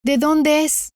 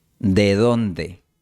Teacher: En esta frase, la primera D de dónde se realiza con la aproximante dental the. ¿De dónde?